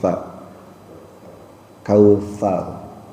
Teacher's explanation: Sa itu ujung lidahnya sedikit digigit. Sa ujung lidahnya sedikit digigit ya, sa.